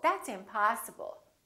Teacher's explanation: Particularly if it's a verb or a noun, we prolong the ah in the stressed syllable